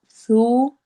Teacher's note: سا کو نرمی سے پڑھنا ہے اور واو مدہ کرنا ہے، یعنی دو حرکہ لمبا کرنا ہے